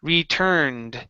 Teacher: UR is actually an ER sound, retur instead of retor